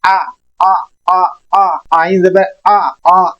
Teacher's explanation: آپ نے اس آئین کو حلق کے درمیان میں آپ نے آواز کو تھوڑا سا بریک ڈاؤن میں لے کے آنا ہے تاکہ آئین ادا کریں. اس آئین کو حمزہ سے آپ نے جدا کرنا ہے ہر حال میں.